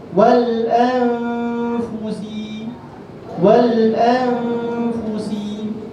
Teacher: kita nak sorok nun tu, nak pergi dah sebut huruf fa